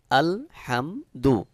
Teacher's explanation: এখানে একটি বিষয় রয়েছে সেটি হলো আলহামদু এখানে রয়েছে হা অর্থাৎ হলকের মধ্যখান থেকে যে হা উচ্চারণ হয় এখানে সেই হা রয়েছে